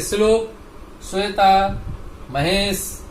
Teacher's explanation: तो ये जो वर्ण हम उच्चारण करेंगे तो हमारी जो वायु है अवरोध होने के कारण टकराएगी और रगड़कर बाहर निकलेगी। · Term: तालव्य सकार